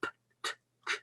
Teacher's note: Vous pouvez faire p, t, k, ça ne fait pas vibrer les cordes vocales, on ne sent pas de vibration dans la gorge quand on touche. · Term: consonnes dures